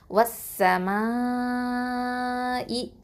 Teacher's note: ஒரே வார்த்தையில் மத்துக்கு அடுத்த மத்து எழுத்துக்கு அடுத்ததாக ஹம்சா வந்திருக்கிறதுனால, ஓகேவா? அப்போது மத்தல் வாஜிபல் முத்தசில்னா 4 இல்லைனா 5 அலிஃப் நீட்டி ஓதணும்